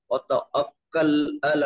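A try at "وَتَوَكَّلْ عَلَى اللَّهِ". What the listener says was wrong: হচ্ছে না, ওয়াতা আকাল নয়, ওয়াতা ওয়াকাল, ওয়াকাল,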